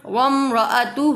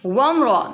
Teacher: میم second کے بعد را آ رہا ہے تو اظہار شفوی ہوگا